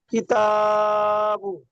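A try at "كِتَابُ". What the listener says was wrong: তবে প্রথমে কিতাবু, কাবজের কি বলে টান দিয়েছেন যখন বানান করেছেন। কাপটাই টান হবে না, হারাকাত। মাশাআল্লাহ, বিনা টানে টান দেওয়া নিষেধ। আর এখানে পড়বার সময় একটু টান হয়ে গিয়েছে, খেয়াল করে পড়বেন।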